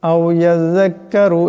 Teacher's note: জালের উচ্চারণটা নরম করিয়া করতে হয়, এখানে রাকে মোটা করিয়া করতে হবে